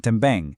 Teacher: Then também, again, totally nasal at the end.